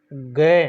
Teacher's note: जैसे हम बोल के देखेंगे, एक तो क बोलेंगे और एक ग, क बोलेंगे और ग में ज़्यादा कंपन होगा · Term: घोष वर्ण